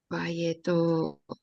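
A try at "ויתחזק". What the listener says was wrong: this is a chet and not a tav. Vayitchazek.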